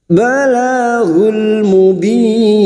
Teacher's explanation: Masuk lagi pada idhar qamariyah, balaghul mubin. Bertemunya mat dengan huruf hidup yang dibaca waqaf, mat arid li sukun, 4 harakat kita panjangkan